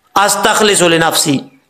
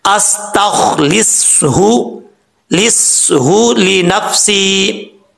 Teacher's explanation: یہاں پہ پڑھتے ہوئے ہا کو چھوڑ دیتے ہیں، استخلص لنفسی، ایسا نہیں کرنا۔ صاد کے بعد ہا ہے بھاری ساؤنڈ میں، اس کو کلیئر کر کے پڑھنا ہے